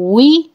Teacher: वाव को पढ़ते हुए होंठ गोल करने होते हैं, और जब वी भी पढ़ेंगे तो होंठों को गोल करके पढ़ा जाएगा